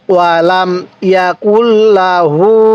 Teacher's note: এই হা এর মধ্যে আবার এক আলিফ টান দিব